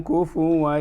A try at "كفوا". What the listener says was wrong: الآن هذه الفاء في ساكنة ولا مضمومة؟ إذن كفو وليس